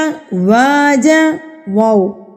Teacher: زبر والے حرف کو ہم نے کھینچ کے پڑھنا ہے، یعنی کہ واو کو کھینچ کے پڑھیں گے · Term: الف مدہ